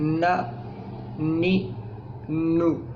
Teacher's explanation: تو ہماری زبان جو ہے یہ انیاب اور ثنایا علیہ کے درمیان ٹچ کرتی ہے، اور اس ایریے کا جو پیلٹ ہے، تالو ہے، یہاں سے یہ حرف ادا ہوتا ہے، اور وہ حرف ہے نون۔